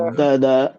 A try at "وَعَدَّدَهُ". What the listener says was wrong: جب عددہ بولیں گے تو عددہ، ہاں کی آواز آنی چاہیے. وعدده الذي جمع مالا وعدده